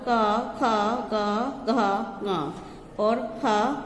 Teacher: इसके उच्चारण स्थान है कंठ